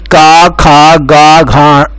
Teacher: तो देखिए, सबसे पहला उच्चारण स्थान आता है कंठ, मतलब जो कंठ से बोले जाने वाले या उच्चारित किए जाने वाले व्यंजन और स्वर है। तो कंठ से उच्चारित किए जाने वाले जो व्यंजन है वो है का वर्ग